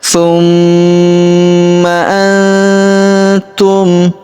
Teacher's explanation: Tumma antum huruf nun sukun bertemu huruf tu maka nun sukunnya melebur ke huruf tu. Kita baca dengung dan samar. Dengungnya kita tahan dua sampai 3 harakat.